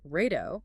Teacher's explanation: In Portuguese, an R at the beginning of a word like rato triggers a sound produced with friction at the back of the throat. Which sounds exactly like an English H.